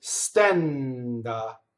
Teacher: The N again has to sing into the D, and that's an open E vowel.